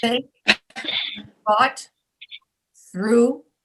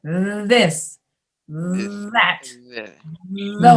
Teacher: So it's TH without sound for think, thought, through. And then if you add sound, you go this, that, those.